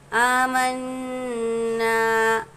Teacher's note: نون پر تشدید ہے اس لیے غنہ کریں گے